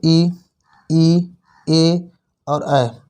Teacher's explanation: अग्र स्वर यानी कि जीभ के अगले हिस्से से जो उच्चारित होते हैं उन्हें हम अग्र स्वर कहते हैं